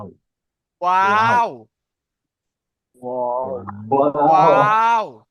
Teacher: 14 নম্বর মাখরাজে ওয়াও, ওয়াও কোথা থেকে উচ্চারিত হয় দেখেন, 2 ঠোঁট না মিলিয়ে মাঝখান উচ্চারিত হয়, মানে দুই ঠোঁট না মিলিয়ে উচ্চারিত হবে ওয়াও